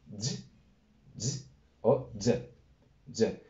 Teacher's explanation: Entre ligeramente sonora y ligeramente ensordecida.